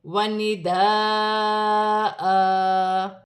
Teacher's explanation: یہاں الف مدہ بھی ہے، بڑی مد بھی ہے، مد متصل، دونوں کو ملا کر 6 الف کی مقدار کھینچ کر پڑھا جائے گا۔ وقف کی صورت میں 2 زبر کی تنوین ایک الف مدہ میں بدل جائے گی، ایک زبر گر جائے گا اور ایک زبر ایک الف مدہ میں بدل جائے گا، جیسے وَنِدَاءَ۔